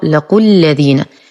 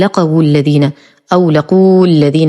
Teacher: نلاحظ أن اللام مفتوحة والقاف مضمومة والواو ساقطة بسبب التقاء الساكنين، إذن تقرأ لقوا الذين، لا نقول لقوا الذين أو لقوا الذين وهذا خطأ.